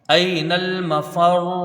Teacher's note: کرنا ہے، حمزہ کو یا سے ملا کے پڑھا جائے گا، یا یہاں پر لین ہے، اس کو جلدی پڑھیں گے، حروف مدہ سے کچھ کم اس کی مقدار رہے گی ، نون کو لام سے ملائیں گے، لام تعریف کا اظہار